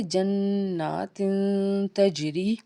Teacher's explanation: جنات تجری، جیم کے اوپر جزم اور جیم حرف قلقلہ کا حرف، تو جب ادا کریں گے تو آواز لوٹ کے آئے گی · تا کے نیچے تنوین ہے اور اس کے بعد تا ہے، تو یہاں پہ اخفا ہوگا، آواز کو ناک میں چھپائیں گے